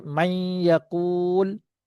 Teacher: maksud naqis ini ialah nun tu didengungkan kerana huruf sifat dia ada lagi. Dia masuk pada ya tu sifat dia masih kekal. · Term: idgham naqis